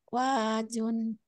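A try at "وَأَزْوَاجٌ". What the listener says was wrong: Nah, ini pengucapan zai pakai jet ya. Wazwajun. Ini pakai z gini, kalau ini pakai ja gini. disambung. Kalau disambung jangan jeda. Wa azwajun Ibrahima.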